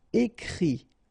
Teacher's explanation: And then the it, phonetically you pronounce I because final t is not pronounced